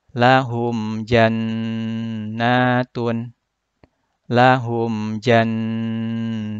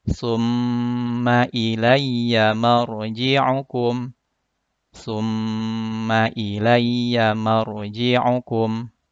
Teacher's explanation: Keempat contoh bacaan gunnah ini, baik nun bertasydid ataupun mim bertasydid, semuanya dibaca berdengung dengan panjang 2 harokat atau 1 alif. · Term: gunnah musyaddadah